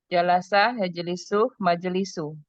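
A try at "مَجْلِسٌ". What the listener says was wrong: Nah, majlisun, tanwin aja. Majlisun.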